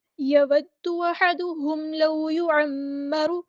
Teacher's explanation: یود دال تشدید والا ہے، مشدد ہے، تو ہم اس کو 2 بار پڑھیں گے، ایک بار ساکن کر کے ایک بار اس کی حرکت کے مطابق